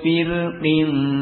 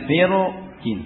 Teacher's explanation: Dengan tafkhim, melihat kepada qaf yang musta'liyah mufakhamah. Tapi dibaca tipis ra-nya karena kasrah yang ada pada qaf ini ya.